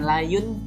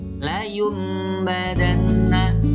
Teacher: Apabila ada nun mati atau tanwin bertemu dengan huruf ba, itu disebut iqlab. Bacaan nun mati atau tanwin berubah menjadi bunyi mim. Jadi apabila ada nun mati atau tanwin bertemu dengan huruf ba, maka bacanya berubah menjadi mim.